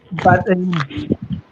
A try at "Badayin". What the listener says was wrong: No, pronounce it like one word. Badayin. So this one is now purely D sound, no T inside.